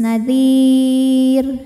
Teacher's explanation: rnya dimatikan dan dibaca secara tarqik Kenapa karena huruf sebelumnya Ya Sukun ya jadi dibaca rnya tipis · Dan apabila berhenti di sini, ra-nya dimatikan dan dibaca secara tarqiq